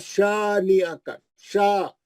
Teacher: خالی الف سے پہلے زبر ہے, ہم کھینچ کے پڑھ رہے ہیں دو حرکت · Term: مد اصلی